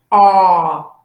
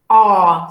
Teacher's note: So this is the A sound, really back. A, ¿ya? Open and back.